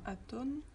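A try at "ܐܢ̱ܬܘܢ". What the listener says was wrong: Aton, parce que faut géminer là.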